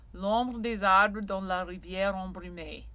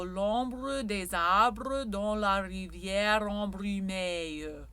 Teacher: we have schwas that are not spoken, l'ombre in speaking, l'ombre in sung French, because again, there's pitch and rhythm. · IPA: [ə]